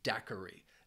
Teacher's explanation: dairi has three syllables and the stress is on that first syllable